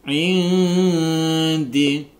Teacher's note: Indi nun sukun bertemu dengan dal, ini adalah bacaan ikhfa hakiki dibaca samar dengung